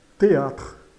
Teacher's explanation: esse e de teatro é um e fechado porque é um acento aqui no caso assento agudo.